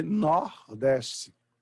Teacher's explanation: alguns dialetos do Nordeste fala-se Nordeste, com O aberto